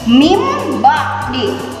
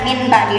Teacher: Nah, berarti kalau nun mati atau tanwin menghadapi ba, otomatis nunnya berubah menjadi M